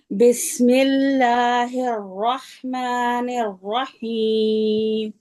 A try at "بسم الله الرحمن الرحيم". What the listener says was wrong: یہ ہا دونوں میں نا جھٹکا نہیں دیں گے الرحمن الرحیم یہ جھٹکے کے ساتھ نہیں کریں گے دونوں کو